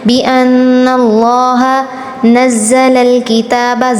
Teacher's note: لفظ اللہ پر تفخیم کرنی ہے